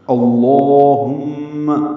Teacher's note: اللہم، لفظ اللہم کا حمزہ عارضی ہوتا ہے، وصلی ہوتا ہے، اس پر زبر لگائی جاتی ہے، زبر کی وجہ سے لام اسم جلالہ پر پڑھتے ہیں، 2 حرکات لمبا کرتے ہیں۔ اللہم، ہاں کو اقصی حلق سے ادا کرنا اور میم مشدد سے ملانا ہے، میم پہ غنہ ہوگا، آواز ناک کے بانس سے ملے جائیں گے، 2 حرکات تک ٹھہرائیں گے۔